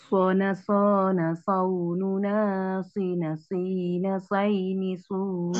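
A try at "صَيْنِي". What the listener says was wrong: Nah, jangan say. Soini suna. Soini suna.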